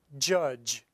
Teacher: an example of a voiced affricate is judge the first and the last sound of the word judge